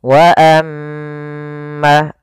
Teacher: Maka perhatikan di sini wa kembali lagi ada bacaan gunnah, yaitu ketika huruf mim berharokat tasydid maka dibaca dengan bacaan gunnah. Cara membacanya, suara nya ditahan 2 harokat.